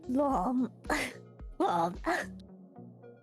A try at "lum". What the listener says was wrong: It's like you're trying to say but like you're really confused on how to say it, and you for some reason add an o onto it, so right?